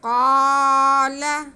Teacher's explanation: تو ہم قاف کی آواز کو ایک الف کے برابر کھینچ کے پڑھیں گے۔ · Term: الف مدہ